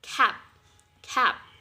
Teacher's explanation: the back of your tongue against the back of the soft palate, cap, cap. And also for G, we have gap, cap, gap. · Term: velar